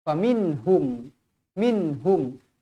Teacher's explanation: Mim kosong bertemu dengan huruf mim. Mim bertemu dengan huruf mim idgham mithlain saghir. Wajib dibaca dengung 2 harakat.